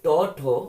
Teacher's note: জিহ্বার অগ্রদন্ত স্পর্শ করে, এই জন্য এটাকে বলা হয় মূর্ধন্য, মূর্ধন্য ধ্বনি